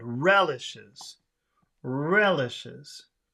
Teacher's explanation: Re is the big sound, not le